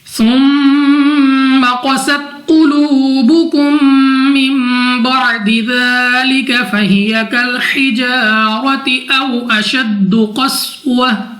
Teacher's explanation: میم مشدد میں ہمیشہ غنہ ہوتا ہے، یعنی ہم ناک میں لے جا کر پڑھیں گے